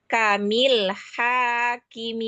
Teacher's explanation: Alirkan lagi ha tengah tenggorokan.